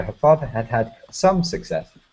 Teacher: her father had had some success but emphasize the some